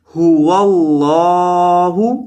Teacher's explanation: لفظ اللہ کے لام کو لمبا کیا جائے گا، مد کیا جائے گا کیونکہ اس کے اوپر کھڑا زبر ہے، کھڑی زبر کی وجہ سے حرف کو لمبا کیا جاتا ہے۔